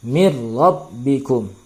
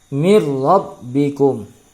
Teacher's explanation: Hukum bacaannya adalah idgham bila gunnah. Nun mati bertemu dengan ra. Ya, nun mati masuk ke dalam huruf ra ya, tanpa berdengung.